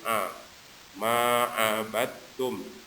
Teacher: Kemudian ain dijelaskan jangan mirip ke hamzah